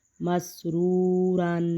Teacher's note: واو ساکن ہے اور اس سے پہلے پیش ہے تو اس کو بھی واو مدہ بولیں گے اور ایک الف کے برابر لمبا کر کے پڑھیں گے